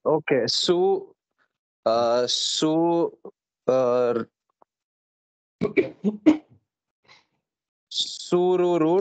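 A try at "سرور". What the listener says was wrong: Sururun, good.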